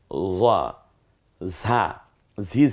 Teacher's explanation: হয়ে যায় জিহ্বাটা একটু গোল করলে উচ্চারণটা হয়ে যায় ঝা ঝি ঝি আওয়াজে বাতাসটা বেরিয়ে আসবে জিহ্বাটা খানিকটা পাতলা হয়ে যাবে